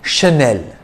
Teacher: e l with a single n and it's pronounced chanel because ch is pronounced sh in french